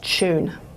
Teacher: the alveolar is followed by a palatal and so then what was alveolar up here has been pulled back to a post alveolar and it's ended up as an affrication